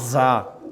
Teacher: آپ کی زبان کی نوک جو ہے اوپر والے سامنے والے دانتوں کی جڑ میں لگے، زا دبا کے۔